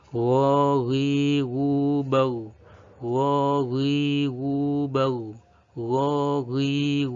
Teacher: Makhraj dari ghain adalah tenggorokan bagian atas.